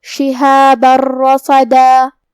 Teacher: لہو شہابا، کلمت شہابہ کے آخری میں با پہ تنوین زبر ہے، پھر حرف الراء ہے کلمت رصدا، را حروف الادغام بغیر غنہ میں سے ہے تو ہمیں یہ تنوین کو را میں ملا کے بغیر غنہ سے لیکن تشدید کے ساتھ یہ حکم کو ادا کرنا ہے۔ شہاب الرصدا، کلمت رصدا میں حرف الصاد ہے اور صاد حروف التفخیم میں سے ہے تو ہم یہ حرف کو بھاری آواز میں اور منہ پھلا کے ادا کریں گے۔